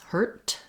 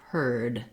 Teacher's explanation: So and then the word heard, even though it's spelled with the EAR, that looks like the word ear, it also just has the sound, the vowel, and instead of a T sound, a voiceless hurt, it has the voiced D, heard